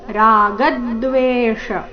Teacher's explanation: ರಾಗದ್ವೇಷ ರಾಗನಲ್ಲಿ ಗ ಮೇಲೆ ಆಘಾತ